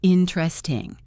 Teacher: remember to stress in and then let the middle melt. In, and then tresting.